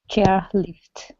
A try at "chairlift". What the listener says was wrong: Almost. You don't want to say chair. Chair. Okay, chair without the breath.